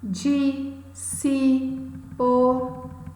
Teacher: Vejam, são pronunciadas, possuem apenas uma sílaba, são pronunciadas com menos ênfase. São, portanto, monossílabas átonas